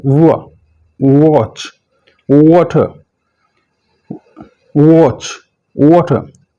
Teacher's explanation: होंठ बिल्कुल गोल होंगे आपके, वाह, और थोड़े से बाहर की तरफ होंगे, वाह। होंठ बिल्कुल गोल और बाहर की तरफ होंगे